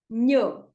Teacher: You know, this sound of GN, that is the sound that you need. It is you get it by touching the middle of your tongue to the palate and getting the sound not from the throat but from the nose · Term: NH